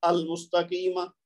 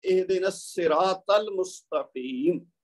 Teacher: तो अस्सिरात का हमजा और अल मुस्तकीम का हमजा ये हमजातुल वस्ल हैं, लेकिन शर्त क्या है कि अगर इस पूरे जुमले को मिला के पढ़ा जाए। अलहदा अलहदा पढ़ेंगे तो वही हमजा बोला जाएगा, लेकिन जब मिला के पढ़ेंगे तो बोलने में वो नहीं आएगा, इसलिए इसको हमजातुल वस्ल कहते हैं।